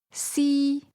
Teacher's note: First tone, high level